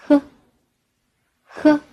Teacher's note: 舌头后缩，舌根接近软腭，让气流从舌根和软腭间摩擦出来